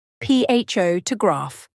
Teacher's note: if you say photograph, you stress the first syllable, pho to graph.